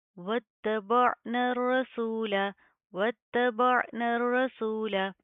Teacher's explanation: حمزہ کے اوپر جھٹکا دیا جاتا ہے عین کے اوپر ہم جھٹکا نہیں دیں گے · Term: عین کی آواز